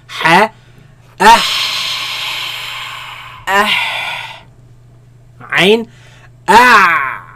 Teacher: Ha, Ain, Okay, where do they come from? They come from the middle of the throat, where the epiglottis moves back towards the back of the throat, right? And constricts the passing of the sound and the air, right?